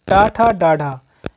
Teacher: ट, ठ, ड, ढ यह मूर्धन्य व्यंजन है।